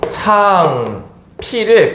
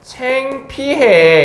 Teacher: 뒤에 있는 이의 영향을 받아서 앞에 있는 후설 모음이 전설 모음으로 교체되는 현상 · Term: 전설 모음화